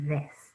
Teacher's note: When we're saying this, we stick out our tongue a little bit for that TH sound.